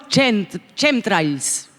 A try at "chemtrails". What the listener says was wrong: Chemtrails. Chemtrails. No se dice la CH en inglés, me parece. Claro, los pronunciaste mal.